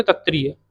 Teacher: कंठ और मूर्धा से वायु टकराएगी तब जाके क्षत्रिय बोल पाओगे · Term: कंठ मूर्धन्य